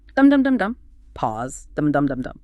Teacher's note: each of those chunks, or half lines, has 2 strong beats, 2 stressed syllables. 2 beats per half, so 4 beats in a whole line.